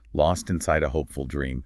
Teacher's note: Lost has that softer T at the end, almost like you're not fully pronouncing it. And hopeful has the emphasis on the first part.